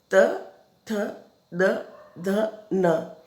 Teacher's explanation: जो हमारी जीभ है वो दांतों को ऐसा लग रहा है जैसे धक्का देती है ना, इसलिए हम इसको दंत व्यंजन भी बोलते हैं बच्चों। इनके उच्चारण के अलग अलग स्थान है, कंठ है, मूर्धा है, तालव्य है, ओष्ठ है।